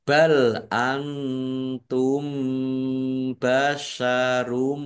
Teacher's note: Mim sukun bertemu dengan huruf ba juga bacaan ikhfa. Ikhfa syafawi dibaca samar-samar juga.